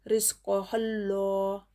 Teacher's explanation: लाम पर तजदीद है, तजदीद और लेटर को 2 मरतबा पढ़ते हैं, पहले वाले हर्फ से मिलाकर और ख़ुद उससे